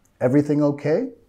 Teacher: Y acá queremos subir de entonación al final de la pregunta para mostrar que es una pregunta.